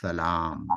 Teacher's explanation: اب سلام میں آپ کے دونوں ہونٹ بند ہو گئے